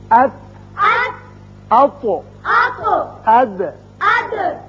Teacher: زبان کا اگلا حصہ اور تالو کا جو کھردرا حصہ ہے ان کے آپس میں ملنے سے یہ تینوں حروف ادا کیے گئے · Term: کھردرے تالو کے حروف